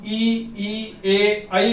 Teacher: जब हम ई, ए, ऐ बोलते हैं तो हमारे ओष्ठ अवर्तुल रहते हैं, इसमें कोई सर्किल नहीं बनता है